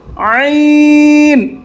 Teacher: আইন চাপ দেন গলার মাঝখানে